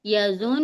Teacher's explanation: नून की आवाज को हम नाक में रोक लेंगे थोड़ी देर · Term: गुना